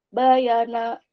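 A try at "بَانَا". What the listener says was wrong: Bahannya panjang.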